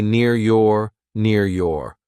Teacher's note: these RS we don't say them because a consonant comes after them